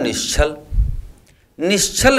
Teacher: यदि दंत स के साथ च वर्ग भी आए तो वह तालव्य सा में परिवर्तन हो जाता है